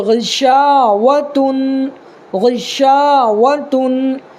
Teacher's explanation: غین زیر غی، شین الف زبر شا، غشا، واو زبر و، غشا و، تا دو پیش تن، غشاوتن، اس کو یہ الف مدہ ہے، الف ساکن ہے، الف ساکن سے پہلے یہاں شین کے اوپر زبر ہے، تو الف جس سے پہلے زبر ہو تو الف مدہ ہوگا، اور الف مدہ کو ایک الف کے برابر کھینچ کر کے پڑھنا ہے